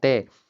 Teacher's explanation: जो जीभ है वो दांत से टच हो रही है।